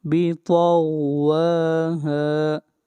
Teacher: واو کو ایک الف کے برابر لمبا کریں گے اور ہا کو بھی ایک الف کے برابر لمبا کریں گے